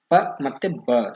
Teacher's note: ಸೋ ಇದರಲ್ಲಿ ಓಷ್ಟ ಧ್ವನಿಗಳು ಅಥವಾ ತುಟಿಗಳ ಸಹಾಯದಿಂದ ಪ ಮತ್ತೆ ಬ ಸೋ ಇವೆರಡು ಕೂಡ ತುಟಿ ಅಥವಾ ಓಷ್ಟಗಳ ಸಹಾಯದಿಂದ ಉಚ್ಚರಿಸಲ್ಪಡುವ ಅಕ್ಷರಗಳಾಗಿವೆ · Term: ಓಷ್ಟ್ಯ ಧ್ವನಿಗಳು